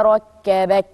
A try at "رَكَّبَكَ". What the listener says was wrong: لا، الهمس مش عاجبني. ركبك.